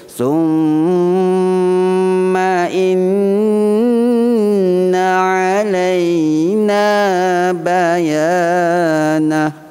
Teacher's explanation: Mim dan nun bersabdu hukumnya wajibul gunnah, wajib dengung. Dalam kedudukan dengung dia berada di atas sekali.